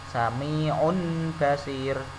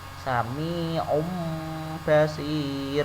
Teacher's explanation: Sami basir, tidak boleh dibaca sami'un basir. Nah, tanwinnya diganti dengan mim. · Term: iklab